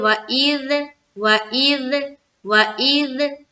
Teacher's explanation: زبان کی نوک سامنے، اوپر اور نیچے کے دانتوں کے بیچ میں دبانا ہے، سامنے کی طرف نکلی ہونی چاہیے تھوڑی سی، اور کھولتے ہوئے ہم ذال کو ادا کرتے ہیں۔